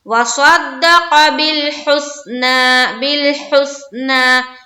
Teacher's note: وَصَدَّقَ بِالْحُسْنَى، صرف یہ دھیان رکھے کہ ہمیں صاد کو منہ بھر کر نکالنا ہے، قاف کو بھی منہ بھر کر نکالنا ہے حلق سے، اور ہا کو بھی نکالنا ہے صاف اور واضح طور پر۔